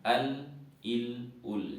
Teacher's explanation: setelah huruf dad masih di sisi lidah itu ada huruf lam huruf lam adalah ujung Sisi lidah setelah huruf DD tapi dia sudah mulai maju ke depan